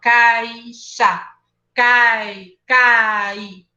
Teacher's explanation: Quando eu tenho primeiro a vogal e depois a semivogal, como na palavra caixa, você concorda que o som começa forte e depois ele fica fraco?